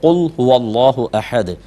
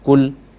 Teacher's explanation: اور اگر آپ نے اس کو باریک پڑھا کل تو اس کا مطلب ہوتا ہے کھاؤ